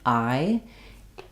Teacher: It may become a little bit more like an ah sound. So the diphthong I glides from the ah to the e, I.